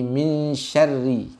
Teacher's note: Ra-nya berbaris kasroh, maka dia dibaca dengan tarqiq, tipis, ya. Kita sering dikali mendengar ra-nya dalam kalimat syarr itu masih terbaca tebal.